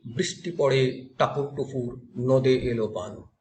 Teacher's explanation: টাপুরের টায়ের উপরে একটা জোর জোর পড়ছে, এটাই শ্বাসাঘাত